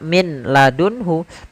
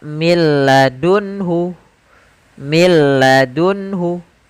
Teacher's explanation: langsung ke huruf lam karena nunnya dianggap tidak ada dan diidgamkan ke huruf lam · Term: idgham